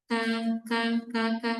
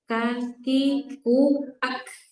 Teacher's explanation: Kaf juga punya sifat namanya nafas atau hams.